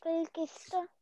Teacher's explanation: آپ آئے نہیں تھے کلاس میں, یہ اس کو کلکلا کرتے ہیں, شاید آپ کو پہلے ہی پتا ہو, قاف تا با جیم دال, تو تا ہلکا سا ہلا دیتے ہیں جب اس پہ ساکن حرف آتا ہے